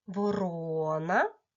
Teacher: чітко почули що наголос падає на другий склад